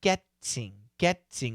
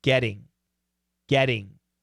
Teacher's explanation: in america we're gonna change that t first of all to a flap t and it's gonna sound like getting getting